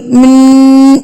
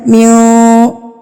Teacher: نون ساکن کی آواز کو ناک میں چھپا لینا کہ وہ واضح نہ ہو، نون کی آواز ظاہر نہ ہو. جیسے غنہ میں ہو رہی تھی من، یہ والی من، یہ اس کو آپ نے ظاہر نہیں ہونے دینا، اس کو آپ نے چھپا لینا ناک میں. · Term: اخفا